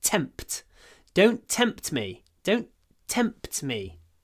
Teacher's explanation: me try to get a lot of T aspiration tempt T the p and the T are both aspirated